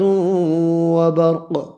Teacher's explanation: قاف ساکن پر قلقلہ کریں گے، حروف مستعلیہ ہے، پر بھی پڑھنا ہے۔